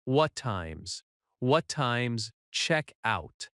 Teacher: In natural speech, what time is often reduces to what times?